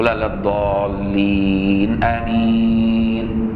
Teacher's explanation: وبين التعوذ والبسمله وبين الفاتحه وامين، وبرده بعد ما يقول ولا الضالين امين، شوف سكته لطيفه، شو لا للضالين امين بالراحه، تدي لنفسك نفس عشان تقول امين كمان بنفس تمدها. وامين عندنا احنا فيها مد بدل في الاول وبعدين مد عارض للسكون في الاخر